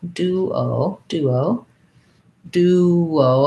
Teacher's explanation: So duo sounds like an oo and an o, duo, duo, duo. And because I'm going from the oo to the o, there's a little bit maybe of a glide in there with a w.